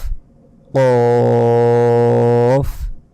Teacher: তারপর ফা ফা ফা তারপর কফ কফ এ অক্ষরটি আমরা যদি বাংলায় এরকম ক এর মত উচ্চারণ করি প্রথমে তাহলে কিন্তু ভুল হবে কফ নয় আরেকটু মোটা ভাবে উচ্চারণ করতে হবে দেখুন ফার মতোই উপরে দুই নুক্তা চার সেকেন্ড টেনে পড়তে হবে